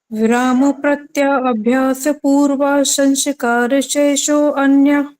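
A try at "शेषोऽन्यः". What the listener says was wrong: शेषो अन्य नहीं बोलेंगे, इसको शेषोन्य बोलेंगे जी। आपने हाँ, अगर अन्य बोलना है फिर शेष प्लस अन्य बोलेंगे। अन्य है, ठीक है, और इकट्ठा बोलेंगे तो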